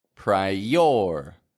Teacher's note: In the middle of that word where we have that I, there's no break between the I and the O. I don't go priority, but I connect them with one of those Y glides.